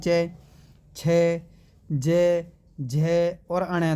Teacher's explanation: इनको बोलने में जो मतलब कि आपको जो तालू की छत का जो पिछला भाग है वह प्रयोग किया जाता है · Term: तालव्य